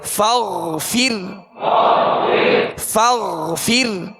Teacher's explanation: سکون فغ جھٹکے سے سختی سے نہیں پڑھیں گے، فغ، فغ، فا را زیر فر، فاغفر، فاغفر، را کو باریک پڑھیں گے اور غائن کو پر پڑھیں گے